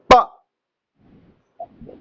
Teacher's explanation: लेकिन जब बोलो, आप बोलो प बोलो प, जब प बोलिएगा तो दोनों होठ मिलते हैं, हवा को झटके के साथ हम लोग छोड़ते हैं, तो हवा के आने जाने के में व्यवधान हमने उत्पन्न किया ना व्यवधान।